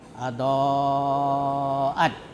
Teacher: Jadi mat itu dipanjangkan, wajib itu harus, muttasil itu bersambung dalam satu kata. Cara membacanya itu wajib dipanjangkan, ya, sampai 2,5 alif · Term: mat wajib muttasil